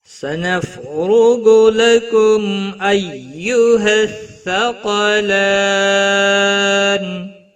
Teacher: تُكَذِّبَانِ سَنَفْرُغُ لَكُمْ أَيُّهَا الثَّقَلَانِ سنف فا ساکن کو ہلانا نہیں، را پیش کی وجہ سے پر پڑا جائے گا، غائن حروف مستعلیہ میں سے ہے، پر پڑا جائے گا ، لکم میم ساکن کے بعد حمزہ آیا ہے، اظہار ہوگا،